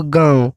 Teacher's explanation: नाक से भी हवा निकल रही है और मुंह से भी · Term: अनुनासिका